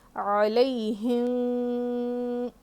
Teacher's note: دیکھیے کیسے علیہم علیہم تھوڑا سا اخفاء تھوڑا سا غنہ. علیہم ہلکا سا اخفاء کر رہی ہوں پھر زیادہ غنہ میں کر رہی ہوں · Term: اخفاء شفوی